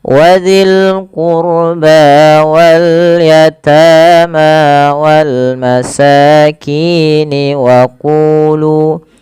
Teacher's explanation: Pada lafal qurba tebalkan rohnya karena huruf ro sukun didahului dengan dhamma